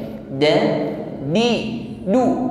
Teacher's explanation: huruf Dal ini syidah sifatnya jadi kuat